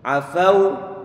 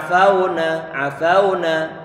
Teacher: Berhubung di sana ada suara u yang terkandung pada huruf wawu yang disukunkan sebelumnya berupa fathah, maka jangan sampai lupa, bibir pun perlu untuk dimonyongkan. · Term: sifat lin